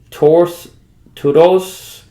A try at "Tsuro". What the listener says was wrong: Is it Suro? You want to pronounce the T. Yeah, T is silent. The T is silent.